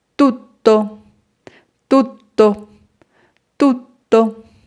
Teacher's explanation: Ti, ti, la sílaba que se alargará será to.